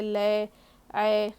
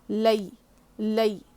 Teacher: حرف لین ہے، نرم آواز کے ساتھ، مجھول نہیں پڑھنا ہے، اس کو معروف پڑھنا ہے ۔ بہت سے لوگ مجھول پڑھتے لے اے، غلط ہے یہ،